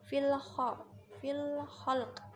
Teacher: itu ada alif lam dengan kha, itu alif lam komariah, dibacanya jelas karena kha itu huruf salah satu komariah.